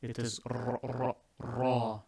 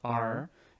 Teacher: you have to roll the R, and it is a heavy R.